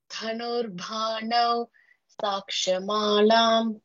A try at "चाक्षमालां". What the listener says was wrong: च अक्ष चाक्ष it is cha